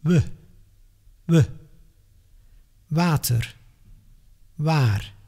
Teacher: As if you want to pronounce the English W, but then without moving your lips, just like a ventriloquist. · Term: Dutch W